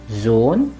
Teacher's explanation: the O followed by the letter ha makes a long O